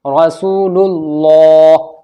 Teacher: ला आवाज मोटी होगी अल्लाह के नाम की